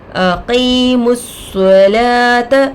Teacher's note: قاف پر زیر کی حرکت ہے، جلد پڑھیں گے. یا ساکن سے پہلے زیر آ کر ہے، یا یہ مدہ ہوگا، تھوڑا کھینچ کر پڑھیں گے. میم پر پیش کی حرکت ہے، جلد پڑھیں گے.